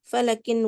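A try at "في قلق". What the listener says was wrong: Bukan fa.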